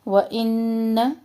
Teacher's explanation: نون مشدد غنہ اور نون کا زبر لمبا نہیں کرنا